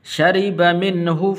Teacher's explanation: را کے نیچے زیر ہے تو اس لیے آپ نے پر کر کے نہیں پڑھنا، باریک کر کے پڑھنا ہے